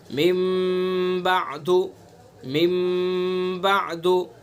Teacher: कल्ब का कायदा बयान किया गया कि नून साकिन या तनवीन के बाद अगर हर्फ बा आएगा तो कल्ब होगा, यानी नून साकिन और तनवीन को मीम से बदल कर पढ़ेंगे, जैसे मिम बादु, मिम बादु।